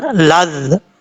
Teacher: زال کو بغیر سٹی کے ساتھ پڑھا جائے گا